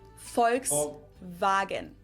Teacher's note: just imagine that it was spelled with an f and V instead